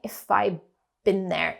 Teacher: Been starts with a b sound. When we have a d sound before a b sound, the d sound changes, and it changes to a b sound. So it sounds like not had been, but have been, have been.